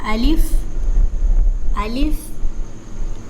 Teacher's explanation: الف جو ہے منہ کے خالی حصہ سے ادا ہوتا ہے